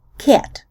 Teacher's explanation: The A in words like cat narrows and fronts closer to an E